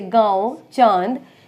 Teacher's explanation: नाक और मुख दोनों की सहायता से उच्चारण करते हैं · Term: चंद्रबिंदु